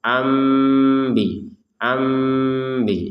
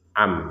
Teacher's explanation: Nun sukunnya berubah menjadi huruf mim. Sehingga terbacanya ambi ambi seperti itu.